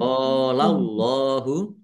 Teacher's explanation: Allahnya dibaca tebal karena harakat di depannya fathah. Lam fathah berdiri mad thobi'i panjang dua harakat. · fathah alif mad thobi'i panjang dua harakat. Allahnya dibaca tebal karena harakat di depannya fathah.